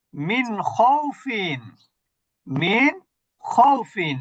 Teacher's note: নুনটাকে স্পষ্ট করতে হচ্ছে এখানে গুনা হবে না